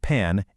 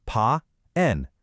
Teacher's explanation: Step 3, you combine them with equal rhythm. So it's not a quick pan, it's pa, N, 2 total beats.